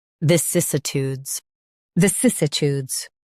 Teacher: Stress cis and keep uh light.